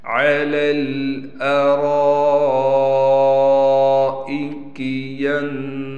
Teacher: रा को मोटा भी पढ़ना है, रा के बाद अलिफ के ऊपर बड़ा मद है, लिहाजा इसलिए रा को हम खींच कर भी पढ़ेंगे, हमज़ा को बग़ैर खींचे पढ़ना है।